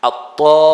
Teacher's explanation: You have to stretch, this is mad lazim, you have to stretch 6 counts